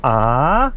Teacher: so it starts off fairly normally and then goes up as it as it progresses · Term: rising